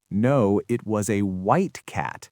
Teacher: Now, I'm stressing white because that's the new contrasting information. The word cat is now secondary. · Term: sentence stress